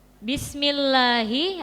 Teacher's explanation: Bismillahi ada lam jalalah tarqiq yang dibaca tipis. Lamnya dibaca tipis.